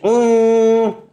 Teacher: الف نون زبر ان، دیکھیے آپ ان جیسے ہی ان کہیں گے، زبان کے نوک سے اوپر کا حصہ، زبان کے نوک سے اوپر کا حصہ تالو کے پاس جا کے لگتا ہے، یعنی سامنے کے دانتوں کے پیچھے ہارٹ پیلٹ پہ جا کے لگتا ہے، لگ کر کے نون ادا ہوتا ہے۔ جب آپ نون ادا کریں گے یہ آواز ناک سے بھی نکلتی ہے